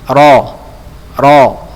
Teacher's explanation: jadi dia bergetarnya sedikit saja ya bergetarnya sedikit ya pada ujung lidah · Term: taqrir